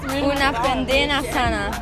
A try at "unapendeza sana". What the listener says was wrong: Nee, nee, niet pendena, una pendeza sana.